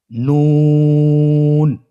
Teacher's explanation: নুন হরফটি উচ্চারণের ক্ষেত্রে অবশ্যই পাতলা করে উচ্চারণ করতে হবে এবং তিন আলিফ টেনে পড়তে হবে।